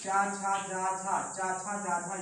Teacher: चा, छा, जा, झा ये जो है ये है स्पर्श संघर्षी व्यंजन भी इनको बोलते